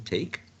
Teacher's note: Voiceless. Oral. Alveolar, right? Because the tip of the tongue is touching the alveolar ridge.